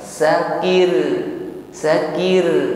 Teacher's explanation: maka ro-nya menjadi tipis getarannya, yaitu tarqiq.